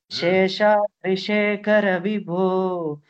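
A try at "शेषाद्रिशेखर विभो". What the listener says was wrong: Shekhar Ka is Mahaprana Kanna. Ka is Mahaprana. Shekhara. Together. Shekhara. Shekhara Vibho Tava Suprabhatam.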